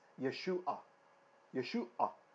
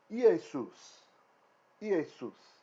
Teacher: And the reason it gets morphed into Jesus is because in Greek, there's no sh sound. There's no way to make a sh. So that becomes S. S. And so the Greek name for Yeshua is Iesus.